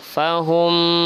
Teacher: mim sukun bertemu dengan mim, itu namanya adalah idgham mimi, maka dibaca berdengung